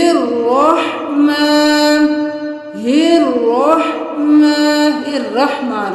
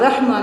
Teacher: را کے اوپر زبر ہے تو اس کو پر پڑھیے